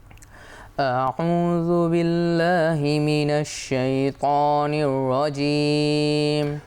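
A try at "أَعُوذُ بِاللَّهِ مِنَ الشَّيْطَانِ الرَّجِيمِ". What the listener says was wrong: শাই কি নাকে যাবে? এটা জিহ্বার মধ্যে শাই। যেন না যায়। এখানে র হরফ তাকরীরের হরফ, অর্থাৎ যেটা কেঁপে যায় বা ভাইব্রেট করে। তো র তাহলে বিসমিল্লাহির রহমানির রহিম, তাহলে আমরা কি করলাম? তাকরির করলাম।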